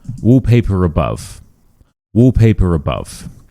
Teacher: if it ends in an R sound and the next word starts with a vowel sound, we do actually say this R. And this is called the linking R.